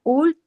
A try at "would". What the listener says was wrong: no, la L no, jamás la L, jamás en esas palabras. la L, cuando vean una L en medio de una palabra, no la pronuncien, ¿ya? Entonces, aquí es would. Yo ya les dije y la D.